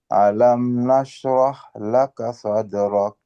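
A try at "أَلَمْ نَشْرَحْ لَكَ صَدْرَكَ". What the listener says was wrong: Ah, kaf di akhir. Dia karena sifatnya ada tipis. Berarti kita harus ak. Ak. Ak. Ak. Ada keluarkan sedikit. Ak. Alam nashrah laka sadrak. Nah, jangan terlalu dia matikan suaranya. Ada sedikit keluar. Ak.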